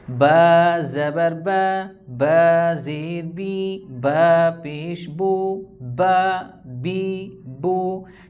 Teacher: با دونوں ہونٹوں کو آپس میں ملائیں گے اوپر نیچے والے کو تو با ادا ہوگا۔